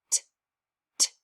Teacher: I didn't feel any vibrating, so it's unvoiced. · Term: tongue tapper